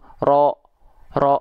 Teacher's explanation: kita pangkal lidah kita naik tuh kelihatan pangkal lidahnya naik Nah karena pangkal lidah naik otomatis vokal a kita akan menjadi O tanpa harus memonyongkan mulut kita